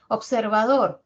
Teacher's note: sí observador una palabra de que tiene cuatro sílabas y ahora la última sílaba y la vocal o es la que presenta la mayor intensidad y por lo tanto la propiedad fonética del acento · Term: acento fonético